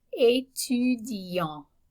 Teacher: If I'm male, okay, I can say étudiant. Notice that the T is silent at the end. And we have a nasal vowel at the end of that word.